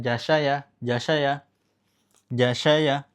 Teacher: Makhraj shin, makhraj ya. Jadi ja, sya, ya itu pengucapan tengah lidah dengan langit-langit.